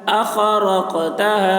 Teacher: قاف میں قلقلہ، قاف کی آواز ڈبل نکلے گی